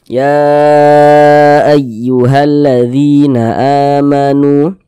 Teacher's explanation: Jadi kalau ada huruf ya ada tanda sukun, sebelum ya sukun ini ada ini nih, ada harokat kasroh nih, maka huruf yang memiliki harokat kasroh dibaca panjang, sehingga dzi dibaca panjang, mad tabi'i panjang 2 harokat.